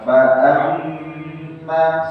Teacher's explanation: Ingat, mim mutasydid ditahan dua harokat.